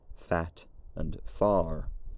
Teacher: By the 1740s, the long vowel had probably become lowered to some extent, fat and far. By 1800, it was probably normal in London to hear a fully backed long vowel, fat and far, although many speakers were also going non-rhotic at this point, so perhaps even fat and far.